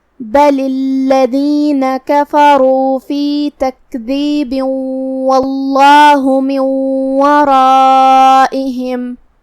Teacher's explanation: ادغام کا معنی ہے حرف کو حرف میں داخل کرنا، تو ہم یہ تنوین کو واو میں داخل کر کے غنہ اور تشدید کے ساتھ یہ حکم کو ادا کریں گے